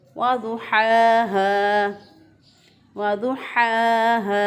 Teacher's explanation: वाद को इस तरह अदा करना है कि ज़ुबान का मोटा किनारा उसको उठाकर ऊपर की एंड वाली 5 दाढ़ों के साथ लगाना है तो वाद अदा होगा हा को वस्ते हलक से अदा किया, एक अलिफ के बराबर लंबा किया।